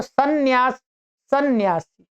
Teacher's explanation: जब हम सन्यासी या सन्यास उच्चारण कर रहे हैं तो उसमें हमें दो नकारों की ध्वनि सुनाई पड़ रही है